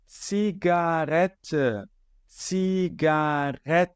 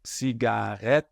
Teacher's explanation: som de h a gente não quer som de h aqui a gente quer um R falado na garganta levemente vibrado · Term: R Inter vocálico